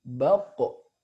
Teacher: Huruf qaf juga punya sifat qalqalah. Ketika disukunkan dia memantul.